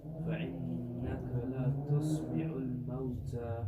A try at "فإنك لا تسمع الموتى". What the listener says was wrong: لا, there's alif mad there.